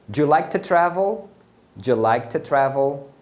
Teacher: o to travel, esse to vai ser pronunciado como t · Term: reduzem o som